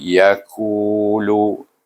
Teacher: Mai, kemudian yakulu, ya satu, lu satu. Ku tu ada nampak panjang sedikit sebab sebelum waw baris depan dibaca dengan mat asli